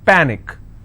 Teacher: Panic is pa-nick, which means I will stress on pa and it's pronounced as panic.